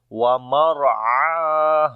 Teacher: Ain we read from the middle of the throat and also we long, and ha we read from the bottom of the throat and also we long due to alif madda.